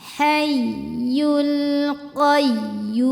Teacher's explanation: Jadi kita meninggikan intonasi suara kita untuk ya tasydid atau wawu tasydid ya. Tapi dengan catatan, ya tasydid atau wawu tasydidnya tidak didahului tanwin atau nun sukun. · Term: nabar